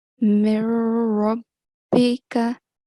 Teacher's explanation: I did complete assimilation, and I'm sure that you couldn't hear a noon sound. And that's how it should be, that's how it is done.